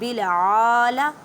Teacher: عین کو ادا کرتے وقت خیال رکھیں کہ حلق کے درمیان والے حصے سے ادا کریں